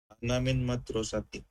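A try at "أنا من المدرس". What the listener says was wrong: Ana bukan madrasati itu. Tidak ada tak marbutoh. Al-Mudaris ya. Yang itu dibaca aja Al-Mudaris. Kalau kita masukin min, jadi ana minal mudaris.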